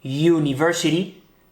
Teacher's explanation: ese primer sonido, university, no es una vocal, ¿verdad? Es una Y, university, por eso ponemos an, porque el sonido es lo que importa, no cómo se escriba la palabra.